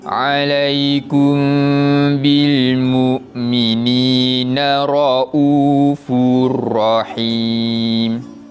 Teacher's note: Di situ kita nampak terdapatnya huruf yang berbaris tanwin 2 di hadapan, iaitu huruf fa bertemu pula dengan huruf ra menjadi bacaan idgham bila gunnah. Cara bacaan tanwin tersebut kita masukkan kepada huruf selepasnya dan dibaca tanpa dengung